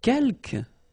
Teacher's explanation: Quelques, you don't pronounce the final S here.